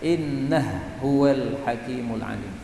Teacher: Kemudian ha diidghamkan pada ha.